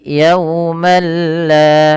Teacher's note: ketika adanya tanwin bertemu dengan huruf lam dengan bacaan yang dinamakan dengan idgham bila gunnah. Idgham artinya memasukkan, bila gunnah itu tanpa gunnah, tanpa disertai dengan gunnah.